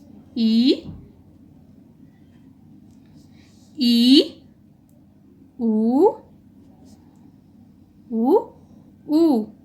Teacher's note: जिन स्वरों के उच्चारण में हमारा मुख द्वार लगभग बंद रहता है उसे हम लोग समवृत्त कहेंगे